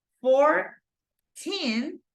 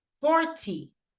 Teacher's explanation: the stress goes in the teen, second syllable, but in this case goes in the first syllable